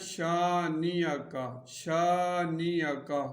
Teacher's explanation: الف مدہ ہے تو اس کو ایک الف کے برابر کھینچیں گے